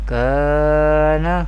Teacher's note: the Arabic letter alif will be pronounced in a thin tone. This is the example of tarkeek.